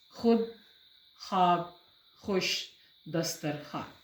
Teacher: واو اپنی پوری آواز کے ساتھ شامل نہیں ہوتی، صرف لکھنے میں دکھائی دیتی ہے، بولنے میں نہیں آتی، اسے بولتے ہیں واو مادولہ.